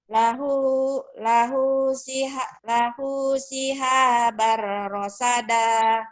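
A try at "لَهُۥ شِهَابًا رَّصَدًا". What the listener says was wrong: Rosoda, bukan rosada. Ayo. Rosoda, ro. Jangan rasada, rosoda. Lahu shihabar rosoda.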